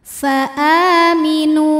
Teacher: ada Hamzah yang dipanjangkan cara bacanya panjang a-nya ini dua harakat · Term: mad badal